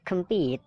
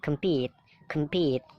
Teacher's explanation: Jadi P-nya itu ditekan, kem-nya itu kan dibaca pecel ya, kem ya. Jadi singkat, kem-nya singkat. Compete, compete. P-nya itu ditekankan.